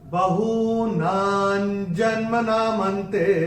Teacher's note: पहले चरण में ना के ऊपर अनुस्वार के बाद का अक्षर है ज, और अनुस्वार के बाद जब ज आएगा तो अनुस्वार का उच्चारण होगा न